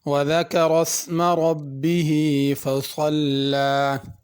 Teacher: وَذَكَرَ اسْمَ رَبِّهِ فَصَلَّى، ذکر میں ذال ہے، اس کو زا کر کے نہیں پڑھنا، ربہ کی را کو پر کرنا ہے